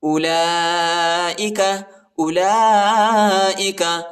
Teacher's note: لام کے اوپر جو ہے کڑا بھی ہے اور بڑا مد بھی آیا ہے، اس کو تقریباً 3-4 سیکنڈ تک کھینچنا ہے